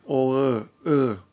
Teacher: also has another thing and Oh with a tilde on it that's like a back o unrounded